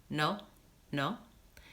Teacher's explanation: if you say no with a pure o that you might have in your language just like this no no it sounds really short